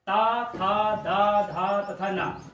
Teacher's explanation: तवर्ग के वर्ण ता, था, दा, धा तथा ना, ये पांचों वर्णों का उच्चारण स्थान दंत होता है